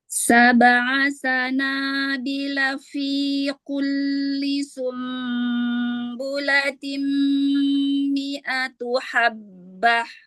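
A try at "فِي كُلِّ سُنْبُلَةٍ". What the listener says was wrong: Ku tipiskan lagi kafnya. Tipiskan lagi kafnya.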